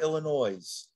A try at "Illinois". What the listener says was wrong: No S.